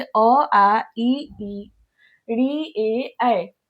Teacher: अबवृत्ताकार स्वर यानी जिसके बोलने में जिसके उच्चारण में ओठ की बनावट गोल नहीं है वो वृताकार स्वर है। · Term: अवृत्ताकार स्वर